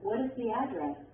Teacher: your voice also goes down at the end of a question that uses a wh word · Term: Falling intonation